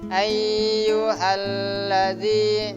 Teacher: Tekan gerakannya kurang lebih 1 alif 2 harokat.